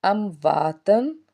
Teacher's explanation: الف سے پیچھے زبر، ایک الف کے برابر کھینچ کے ادا کیا